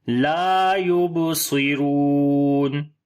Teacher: لا یبصرون، الف مدہ ہے، با کے اوپر قلقلہ کریں گے، صاد کو موٹا پڑھیں گے، را کو لمبا کریں گے ، واو مدہ ہے، اور جب یہاں پر رکیں گے مد